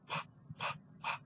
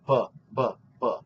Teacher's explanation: you'll start to feel that during the B sound there's a vibration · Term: voicing